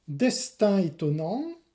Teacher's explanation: Destin étonnant, c'est une cacophonie hétérovocalique, proximité de deux voyelles différentes, la nasale 1 et la voyelle E.